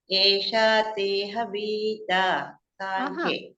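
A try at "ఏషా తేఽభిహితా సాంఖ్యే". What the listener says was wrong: తేహ కాదు తే అభిహిత కలిపేస్తే తేబిహిత అని అండి అంతే హ లేదు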